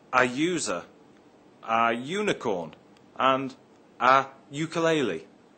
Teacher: The word university begins with a U, but is pronounced with a Y sound at the beginning.